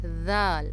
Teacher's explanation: ذال زبان کی نوک سے ادا ہوتا ہے، یعنی کہ ہماری زبان کی نوک سامنے والے دانتوں کے جو ہے درمیان میں آئے گی، ذال، اور نرمی سے ادا ہوگا.